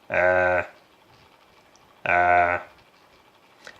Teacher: the sound of Ain is voiced. So when you touch your larynx while you produce this sound, you could feel the vibration of the vocal cords. So if you produce this sound without feeling the vibration of the vocal cords, then you produced wrong.